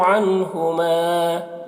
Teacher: عن کے نون میں اظہار ہوگا، اس نون کو جلد پڑھنا ہے۔ ہما یہاں پر الف مدہ ہے، اسے ایک الف کے برابر کھینچ کر پڑھیں گے۔